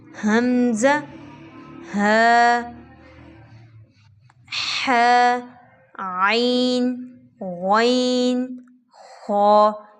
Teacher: ये सारे हरूफ जो हैं हलक से अदा किए जाते हैं। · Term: हरूफ़ हल्की